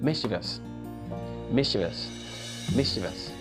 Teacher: that word has the primary stress on miss.